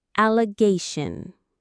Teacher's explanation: You'll notice that shun sound at the end, which is very common in English. The stress, the strongest sound is on the gay syllable. Allay gayun.